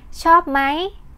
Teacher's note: note that Mai is rising tone for speaking and waiting but you may hear most Thai use high tone for example shop Mai which is common and used for informal